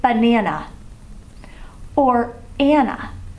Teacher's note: that ending a actually says ah